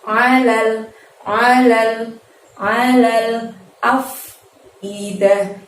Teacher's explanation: Alal, a-nya pakai ain lagi, jadi tidak perlu membuka lebar mulut kita karena kita keluarkan dari tenggorokan.